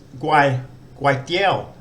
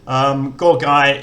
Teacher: And it's one of the few words I could find that use the fourth tone mark. It's guai tiao, which has got a rising tone. Guai tiao. Gorgai is a mid-class initial consonant, and using that fourth tone mark, it makes a rising tone.